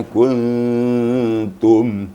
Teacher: Karena ta itu sifatnya tipis, ya. Maka nun disamarkan kepada ta, maka ikut jadi tipis. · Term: ikhfa yang hakiki